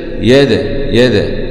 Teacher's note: دال سكون مع القلقلة لأن الدال من حروف القلقلة المجموعة في كلمتي قطب جد